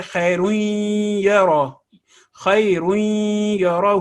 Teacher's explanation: نون کی آواز جو ہے وہ مدغم ہو گئی، ادغام ہو گیا یا کے ساتھ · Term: ادغام بالغنہ